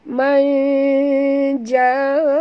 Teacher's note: kena sorokkan bunyi nun ke dalam huruf jim disertai dengung ikhfa hakiki